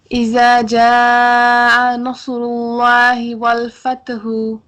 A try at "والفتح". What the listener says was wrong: ہا آخر میں بھی ہے نا، فتح، یہاں پہ بھی ہا ہوگا نا.